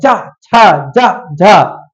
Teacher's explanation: स्पर्श संघर्षी जिनको स्पर्श करके संघर्ष करके बोला जाता है। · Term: स्पर्श संघर्षी व्यंजन